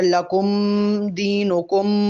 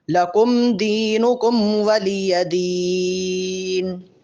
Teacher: لکم اور دینکم پر میم ظاہر کریں گے، لیکن لمبا غنہ نہیں ہوگا. اگر لکم دینکم ایسے پڑھیں گے تو یہ غلط ہوگا، ان دونوں میم پر غنہ نہیں ہے.